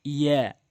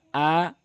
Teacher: ইয়াটি জিব্বার মাঝখান উপরে তালু, আর হামজাটি হলকের শুরু থেকে।